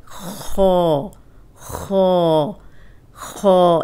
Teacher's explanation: اس میں ہونٹ گول نہیں ہوں گے لیکن یہ موٹا پڑھیں گے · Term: موٹا حرف